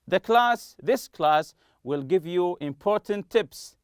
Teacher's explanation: will give you important tips as if it's just one t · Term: linked